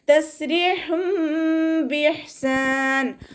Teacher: തെൻവീനിലുള്ള നൂനിൻ്റെ സൗണ്ടിനെ മീമാക്കി മാറ്റി മറിച്ചിട്ട് ഉണ്ണയോടുകൂടി ഓതി കൊടുക്കുക. അവിടെ നൂനിൻ്റെ സൗണ്ടിനെ കേൾക്കുകയേ ഇല്ല.